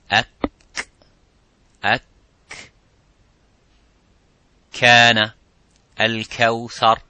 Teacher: the kaf touches the roof of the mouth, a little bit touches the bone of the roof of the mouth